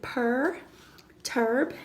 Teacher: our follows that vowel and it kind of takes over it bosses it and so you only hear the R it's also called an R controlled vowel in the boss the